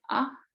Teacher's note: then we have the long a with the high tones